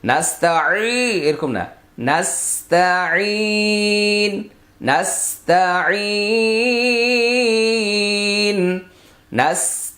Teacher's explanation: এই আইনের উচ্চারণ বেশি বাড়াবাড়ি না করে পাতলা।